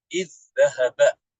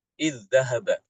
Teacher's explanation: Imam Ibnu Amir membaca kata id apabila bertemu dengan huruf dal, seperti misalnya id dhahaba, maka dibaca dengan idgham